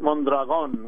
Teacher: Pronounce it Mondragon with the accent on the last syllable.